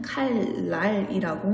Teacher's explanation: 리을이 앞에 오고 니은이 뒤에 오는 상황에서도 발음은 칼랄이라고 니은이 리을로 바뀌어 발음될 수 있습니다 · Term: 유음화